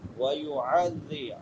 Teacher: عین، حمزہ نہیں پڑھنا، عین پڑھنی ہے